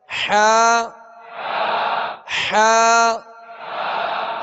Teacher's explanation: حا کو درمیانی حلق سے ادا کریں گے